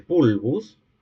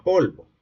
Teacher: sufrió una evolución de la vocal cerrada posterior breve tónica a la semicerrada posterior